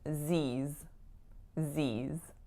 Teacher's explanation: And for the pronunciation of Z's, usually it'll be spelled like Z apostrophe S, but that final S, in fact, makes another Z sound. So think about it as Z, E, like a tense IY, and then another Z at the end.